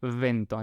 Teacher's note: la B corta tiene ese sonido labiodental. Es como la F, pero apoyando los labios inferiores en los dientes superiores. Es va, va, como en viento.